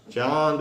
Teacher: अनुनासिका, इसके उच्चारण में श्वास वायु जो है वो मुंह और नाक दोनों से निकलती है। बड़ी पहचान, चांद बोलिए मुंह भी खुलेगा और नाक से भी श्वास वायु निकलेगी, इसको अनुनासिका बोलते हैं।